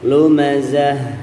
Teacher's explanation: Baik, di dalam ta ya, huruf ta marbutah, ta yang bulat itu kalau di akhir maka pembacaannya berubah menjadi hak besar · Hak itu di pangkal tenggorokan, kemudian ada sifat hamznya ya.